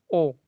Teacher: आपका कंठ से ध्वनि निकलेगा, प्लस आपका जो ओठ है उसका शेप ऐसे गोल हो जाएगा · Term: कंठ ओष्ठ्य